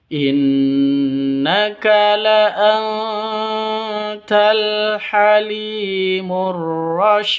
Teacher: Cara membacanya adalah secara samar-samar, dilantunkan sambil mempersiapkan huruf 't' karena ini adalah bacaan Ikhfa Haqiqi. · nun mati bertemu dengan tak. Cara bacanya samar didengungkan, siap-siap ke huruf taknya, karena bacaan ikhfa hakiki.